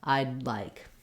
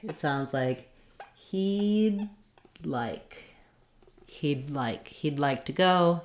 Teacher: You don't hear I'd like with a break. We use an unreleased D, a stopped D sound. I'd go up to make the D and then release right into your L.